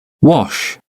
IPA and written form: wɒʃ (wash)